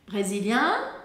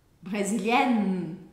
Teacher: No masculino, eu deixo a boca aberta para não ouvir o N, apenas faço um som nasal. No feminino, eu marco o N.